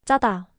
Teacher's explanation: The base sound is chew. You make the same sound as chew but with more tension in your throat. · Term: tense consonants